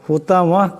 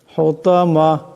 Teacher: এখানে তো আছে, এটা মোটা আওয়াজে উচ্চারণ করতে হবে। হুতামা করলে হবে না, হুতামা এমন করে।